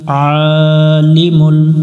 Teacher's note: আইন অক্ষর, এটা গলার মধ্য থেকে একটু চেপে পড়তে হবে। উপরে খাড়া জবর আছে, এক আলিফ টান দিব এক লেখা দেখে।